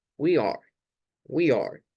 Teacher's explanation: esto se saca como en un solo bloque, como que fuera un bloque de sonido